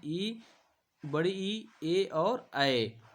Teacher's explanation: अग्र स्वर से बोले जाते हैं कौन कौन? ई, बड़ी ई, ए और ऐ। इनको हम लोग बोलते हैं अग्र स्वर बोलते हैं।